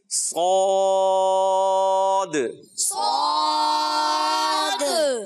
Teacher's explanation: تو پیارے بچوں جہاں سے ہم نے سین پڑھا تھا, زا پڑھا تھا, وہی مخرج ہے, مگر صاد کو موٹا کرنا ہوتا ہے. زبان کا درمیانی حصہ اور اس کی جڑ اوپر تالو کی طرف اڑ جاتی ہے, تو یہ حرف جو ہے موٹا ہو جائے گا